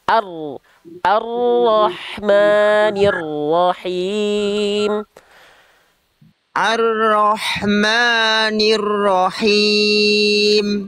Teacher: dari A, ar-ro langsung masuk ke huruf ro. Jangan A-nya agak panjang dia.